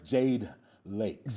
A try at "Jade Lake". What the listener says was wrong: Jade Lake. It's not Lakes, it's Lake.